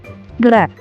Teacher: இது இடையின எழுத்து என்பதால் இடையின ரகரம் என்கிறோம். ர, நாவின் நுனி மேல் அன்னத்தில் மைய பகுதியை உரசுவதால் ரகரம் தோன்றுகிறது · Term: வல்லின ரகரம்